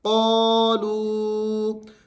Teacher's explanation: آگے واو مدہ بھی ہے اور اس کے ساتھ ساتھ چھوٹی مد بھی ہے اس کے اوپر، تو آپ نے اس کو 3 الف کی مقدار تک لمبا کرنا ہے۔